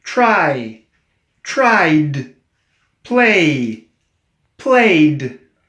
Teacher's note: these are voiced endings and they end in a D sound